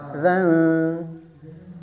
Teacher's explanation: Ketika zal, ujung lidahnya sudah di ujung gigi seri atas. Zal. Dan perhatikan, jangan ada hamesnya ya.